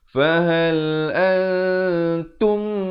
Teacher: Kemudian tum masuk betul-betul dengung di sini. Mim mati bertemu mim. Jadi dia punya level dengungnya itu dia lebih tinggi. Fahal antum naikkan sedikit.